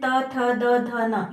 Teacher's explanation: त वर्ग है त, थ, द, ध, न, इसमें आप देखेंगे कि हमारी जीभ जो है वो दांतों को छू करके हल्का सा बाहर आके फिर इसका उच्चारण होता है।